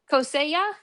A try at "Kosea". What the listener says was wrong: Kosea. So the J is not really pronounced hard there. Kosea.